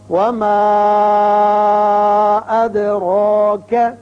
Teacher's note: را کے اوپر کھڑا زبر ہے، اس کو پر پڑھیں گے۔